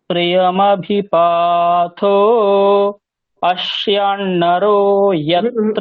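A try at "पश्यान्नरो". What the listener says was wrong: এখানে আরো টানতে হবে অশ্যান। অশিয়ান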